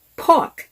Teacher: in the british accent r is pronounced very softly when at the end of the word for example pork you would barely pronounce the letter r